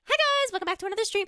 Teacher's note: The uptalk and lengthening at the end of each sentence. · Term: lifestyle influencer accent